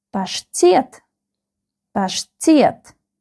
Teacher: The second syllable is stressed.